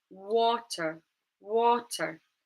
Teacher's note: The stress is in the first syllable, wa. So then the schwa sound appears in the unstressed syllable, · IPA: /ə/